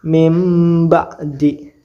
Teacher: nun mati bertemu dengan ba hukum bacanya iqlab cara bacanya dibaca menjadi mim